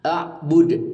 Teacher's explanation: ini adalah Qalqalah Kubro membacanya memantul dengan kuat